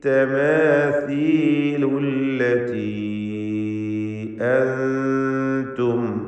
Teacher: മാ ഹാദിഹി التماثيل التي أنتم, التي എന്നതിലെ യാഇൻ്റെ ദീർഘം മദ് മുൻഫസിൽ ജായിസ് എന്നതാണ്. 4-5 ഹറക്കത്തിൻ്റെ അളവിൽ അവിടെ യാഇനെ ദീർഘിപ്പിക്കുക.